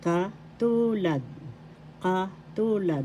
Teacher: That means similar. First syllable ka, second syllable tu, third syllable lad. The second syllable has the accent.